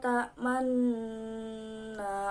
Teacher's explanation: dibaca ismam, yang artinya mencampurkan domah pada sukun dengan memoncongkan bibir